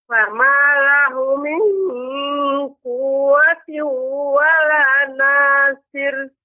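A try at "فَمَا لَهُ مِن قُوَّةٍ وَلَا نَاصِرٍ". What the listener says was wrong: Ya, lahunya lebih dipanjangkan sedikit Ibu. Ini 2 harokat jadi ditekan. Fama lahu min ya.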